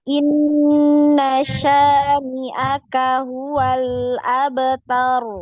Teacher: Inna ini ditahan. N-nya itu ditahan.